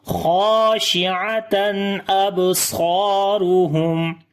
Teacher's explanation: Kha and alif both we read in heavy sound. Ain we read from the middle of the throat. After the tanween there is hamza, we make izhar here. · On the ba we make qalqala. · Swad and alif again we read in heavy sound. · After the meme sakin there is ta, we make izhar shafavi and tawassut quality on the meme